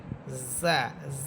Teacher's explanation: জা জিহ্বার আগা সামনের নিচে দুই দাঁতের আগার সাথে লাগাবেন এবং ঝিঝি পোকার মতো একটা আওয়াজ হবে।